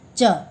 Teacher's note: च छ ज झ य, इसका उच्चारण स्थान है तालु या तालव्य, तालु से निकलता है। ये अक्सर टकरा के तालु से निकलता है।